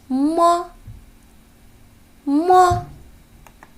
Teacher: 小朋友呢，这个小男孩是用手摸着往前走的。那这个摸就是我们今天要学的第3个声母。同时你可以看到这个山这儿有一个小拱门这两个小拱门的样子呢，就和摸的样子特别的像。这就是声母摸。老爷爷的拐杖就是佛。好，摸我们可以怎么记呢？摸一摸，摸摸摸。当发这个摸的音的时候， 我们双唇要紧闭，气流从鼻孔透出，声带颤动，声音较亮 。来，试一试，摸摸。来看这个佛，迎着风儿佛佛佛。读这个佛的时候呀，上唇要接近下唇，形成窄缝，让气流从这个缝中摩擦成声，读音较短，声带不颤动。来，再读一读，佛佛佛，这就是声母佛。那现在我们再拿刚才那这张薄纸放在嘴前，看一看发这4个音时，薄纸又有什么变化了呢？当你试完